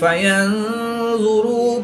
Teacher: نون ساکن کے بعد ظا حروف اخفا میں سے ہے تو یہاں پر اخفا ہوگا، یعنی غنہ زمانی کر کے پڑھیں گے